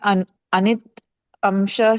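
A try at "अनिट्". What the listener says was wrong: Not anitamsha. It, you have to say. You are telling anitamsha.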